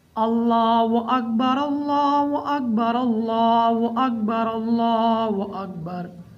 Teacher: اللہ تعالیٰ کے نام کو موٹا پڑھیں گے کیونکہ اللہ تعالیٰ کے نام سے پہلے فتح ہے۔ اللہ تعالیٰ کے نام سے پہلے زبر ہو تو اللہ تعالیٰ کے نام کو موٹا پڑھتے ہیں